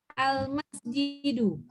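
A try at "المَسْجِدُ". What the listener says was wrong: Enggak ada yang panjang. Al-masjidu.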